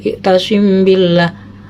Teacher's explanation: Ketika ada mim mati bertemu dengan ba, itu dinamakan ikhfa safawi, adalah mim mati yang dibaca samar pada bibir